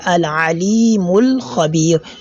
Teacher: So you can see the elongation that I just made here, al-alimul khabir, that is on the lam. In front of the lam there is a letter of elongation, that is al-mad al-asli.